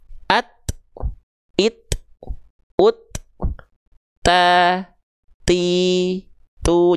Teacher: ketika ujung lidahnya nempel ke pangkal gigi atas, dia tertahan dulu suara yaitu syiddah. Ketika lepas baru ada terpercik nafasnya. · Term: percikan nafas